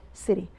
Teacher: city because the T is medial in American accent. It's called flap T. It's pronounced as ره, city.